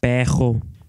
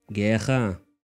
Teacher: The normally trilled R, represented by double R in writing, as well as by a single R at the beginning of words, is pronounced kh by many speakers.